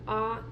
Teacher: the low vowel is going to be back